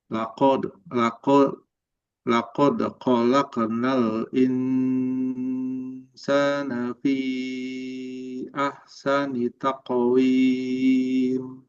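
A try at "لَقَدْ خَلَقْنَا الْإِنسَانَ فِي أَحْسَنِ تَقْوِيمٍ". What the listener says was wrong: yang qf kedua nih bagus. Taqwim. Yang qof yang pertama masih kurang.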